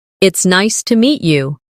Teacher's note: Stress nice and meet to make it sound warmer.